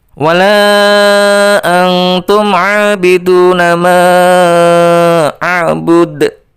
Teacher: Coba diperhatikan, di situ ada 5 ketukan pada lafal la, kemudian ada 2 ketukan pada lafal a, ya kan? A itu dibaca mad tabi'i, bacaannya adalah 2 ketukan atau 1 alif. Kemudian du itu juga 2 ketukan. · Ya, kenapa dibaca bud? Ya, dipantulkan karena huruf dal itu adalah huruf qalqalah